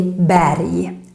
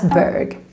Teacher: In Swedish, when we have RG, we pronounce it like a Y sound.